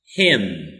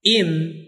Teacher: Him for the strong form, im for the weak form.